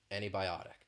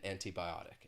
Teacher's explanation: you don't really hear that t sound so that is specific to the American accent